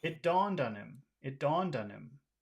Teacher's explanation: so again we have our big small big small pattern our big small big small Rhythm